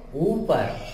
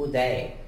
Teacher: तो ऊपर में जोर ज्यादा पड़ता है, उदय में जोर कम पड़ता है, इसलिए उदय हर्षु से होगा, ऊपर दीर्घ से होगा।